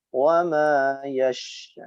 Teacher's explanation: sifat khusus pada huruf shin yaitu tafasyi, angin yang menyebar di dalam mulut